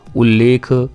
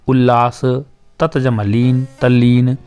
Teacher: यदि त व्यंजन के बाद ल आए तो त फिर ल में बदल जाएगा। जैसे उत जमा लेख, त को ल बना दिया उल्लेख।